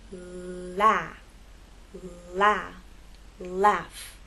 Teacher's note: as you move into the vowel sound that tip of the tongue is going to drop down